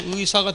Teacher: 특히 표준 발음과 관련돼서 하나 기억할 수 있는 가운데 의에 대한 문제가 가끔 나올 수 있는데, 이것이 이제 우리가 첫 음절에 있을 때에 있어서는 그대로 의로 읽죠